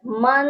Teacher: ناک میں ایک الف کے برابر آواز کو روکنا۔ جیسے پہلا لفظ ہے میم 2 زبر من، اس میں جو اینڈ پر نون کی آواز ہے وہ آواز میں ہم نے ٹھہرائے رکھنا ہے۔ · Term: غنہ